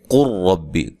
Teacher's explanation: قل ربی، کل ربی نہیں کہیں گے بلکہ قاف کو ڈائریکٹ را کے ساتھ ملا دیں گے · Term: ادغام